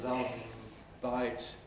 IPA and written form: ˈlʌv baɪt (love bite)